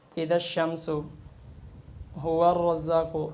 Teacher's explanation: اور ایک بات اور ذہن میں رکھ لیں کہ یہ الف مدہ ہے، تو ملاتے ہوئے الف مدہ ختم ہو گئی، حذف ہو گیا